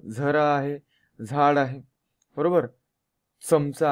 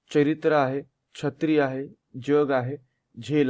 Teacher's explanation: जेव्हा जेव्हा त्या च छ ज झ मध्ये य चा उच्चार आला तेव्हा तो काय असते, तालव्य वर्ण असतो.